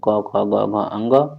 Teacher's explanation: तो क ग अंग अल्पप्राण है। बाकी ख और घ महाप्राण है।